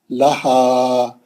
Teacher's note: مد اصلی ہے. لہا، یہ دو چشمی ہاں ایفرٹ لیس ہے، سینے کی ہوا کے جھٹکے سے نکلیں گا. مد اصلی کر کے روکنا ہے، یہاں پہ مد عارض نہیں ہوتا ہے نا.